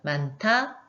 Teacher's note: 많다도 히읗과 디귿이 만나서 거센 소리인 티읕으로 바뀌었죠? 그래서 이런 경우는 많다, 축약이 됩니다. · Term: 거센소리 대기